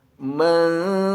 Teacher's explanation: Zai adalah salah satu huruf ikhfa, maka bunyikan dengan bunyi dengung yang ditahan 2-3 harokat